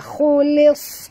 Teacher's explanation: naikkan lidah ke atas, khulis, kena nak tebalkan sad